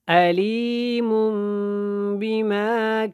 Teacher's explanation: یہاں پہ اقلاب ہوگا اور غنہ کے ساتھ ہوگا